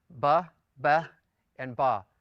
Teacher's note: It's as if the vowel has dropped out, and you're simply pronouncing the first consonant with a little bit of air, followed by the rest of the word. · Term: reduced vowels